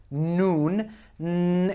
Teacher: N sounding letter that is n if you focus on that the tip of the tongue is much more sharper and it's more pointed at the top of the gums